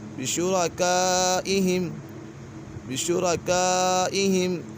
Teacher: یہاں پر مد متصل ہے اور پھر مدہ کے بعد حمزہ اسی کلمے میں تو اسی وجہ سے مد متصل ہوگا۔